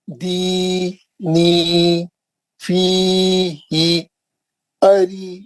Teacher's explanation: پہلے یا ساکن سے پہلے دال پہ زیر ہے، دوسرے یا ساکن سے پہلے نون پہ زیر ہے. تو 2 مد اصلی ہے، 2 بار کھینچنا ہے، 2 حرکت 2 حرکت.